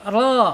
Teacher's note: Ro ini secara makhraj ya ada di allisan ya. Ujung tepi lidahnya menyentuh langit-langit depan ya.